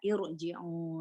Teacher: Dibaca tebal karena kasronya di hamzah wasolnya itu kasro arido